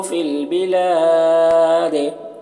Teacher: یہاں پر وقف کریں گے تو دال کا زیر سکون سے بدل جائے گا، تو دال میں قلقلہ ہوگا